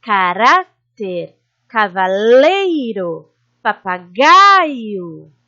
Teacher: Paroxítonas, que são as palavras com a penúltima sílaba mais forte, por exemplo, caráter, cavaleiro, papagaio.